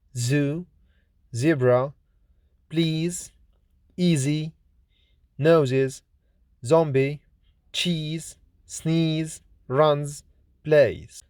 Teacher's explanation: Z is voiced, lenis, alveolar, fricative consonant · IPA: /z/